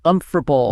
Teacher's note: Right. But a native speaker drops an entire syllable and just smashes the consonants together